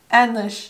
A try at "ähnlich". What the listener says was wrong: Yeah. Pretty close.